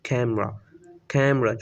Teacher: जो लास्ट पे जो वॉवल अ साउंड है वो श्वा में कन्वर्ट हो रहा है